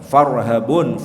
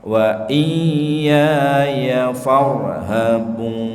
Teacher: Farhabun, farnya itu rohnya tafkhim.